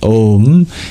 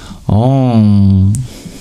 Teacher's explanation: M indicates it's an Anu or an Anu nasika which is a nasalized sound you can even do it with your lips never touching